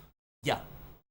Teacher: The Spanish gets it closer because it is a partially palatable but it's not entirely palatable. In Spanish like you have that Y sound which is a very light close approximation but the tongue is further back in the mouth.